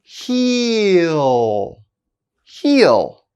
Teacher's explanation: Let's take heel as an example. As you pronounce he, slide your tongue forward and raise its tip to touch the back of your front teeth and add the ul sound.